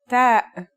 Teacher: The pronunciation is like the English T, except you should release your breath with a strong burst of air.